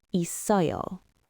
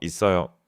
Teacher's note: Notice in 있어요, the syllable it has a final consonant, 쌍시옷, a s sound, and then 어요 follows it. So because of linking, that 쌍시옷 slides forward.